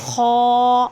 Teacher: ان حروف میں موجود الف کی زبان کو جڑ اٹھا کر منہ میں آواز بھر کر موٹا پڑھتے ہیں۔